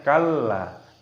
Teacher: lamnya ini berharokat tasdid, maka kita idghamkan, kita masukkan, kita tekan kalla. Kalla dalamnya di sini dipanjangkan 5 ketukan karena mad jaiz munfasil.